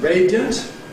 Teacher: In each case, we start [ˈreɪdi…], but in the case of the adjective, ‘radiant’ [ˈreɪdiənt], we’ve got a weak [ə], so we can compress into [ˈreɪdjənt]